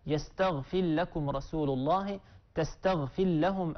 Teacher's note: يدغم أبو عمرو رحمه الله بخلف عن الدوري، والإدغام هو المقدم في الشاطبية